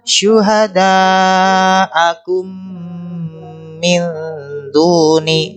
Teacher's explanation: suara mim bertemu minnya dilamakan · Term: idgham mimi